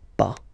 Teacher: Okay, we write it pas, okay, but as usual final s is not pronounced